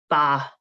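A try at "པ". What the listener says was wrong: No ba, no b. No b. P sound. Make it p, more p.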